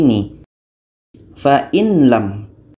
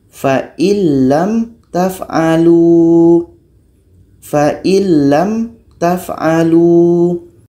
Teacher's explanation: huruf yang kedua ada tasdid atau syaddah jadi cara bacanya adalah nun mati ini masuk kepada huruf lam kita masukkan bunyinya secara sempurna · Kalau sudah masuk bunyi nun kepada lam, itu sudah masuk secara sempurna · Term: idgham Kamil, idgham kamil